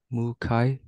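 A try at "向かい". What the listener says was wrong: Perfect. Mukai.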